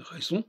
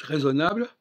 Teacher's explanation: si vous dites raisonnable, le on disparaît